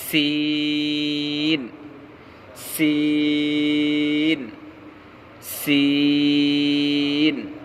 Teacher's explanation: سین کا مخرج زبان کی نوک اور سامنے کے دانتوں کے کنارے سے سین ادا ہوتا ہے